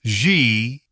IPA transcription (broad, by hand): ʒ